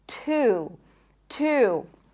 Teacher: This is a strong T sound, and actually it's an aspirated T, so it feels like it has a little bit of air there. Two, two. And then you have a tense oo sound.